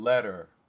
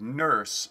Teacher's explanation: schwa rotisity is the unstressed form of it, and the turned epsilon rotisity is the stressed form